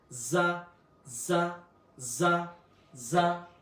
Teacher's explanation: জা একটু শক্ত হবে জিহ্বার আগা থেকে। · র একটু মোটাভাবে উচ্চারণ হবে এবং ঠোটের মধ্যে একটু কম্পন সৃষ্টি হবে। র যা একটু শক্ত হবে।